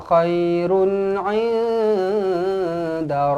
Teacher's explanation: Run tanwin 69 bertemu dengan ain, izhar halqi dibaca dengan jelas dan terang.